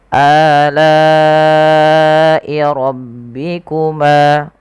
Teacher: rohnya tebalkan karena dia roh tafkhim, adanya huruf roh yang berharokat fathah.